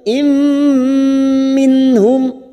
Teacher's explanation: kasrotain yang bertemu mim idgham bi gunnah, kita tekan 3 ketuk · nun sukun bertemu ha idhar halqi, kita baca jelas tanpa mendengung. Nun sukun atau tanwin yang bertemu dengan 6 huruf ini dibaca jelas tanpa mendengung.